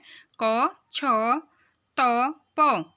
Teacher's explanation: क कंठ है, छ तालव्य है और प ओष्ठ है